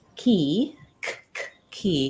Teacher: when I say that sound my tongue is Lifting and touching in the back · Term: k sound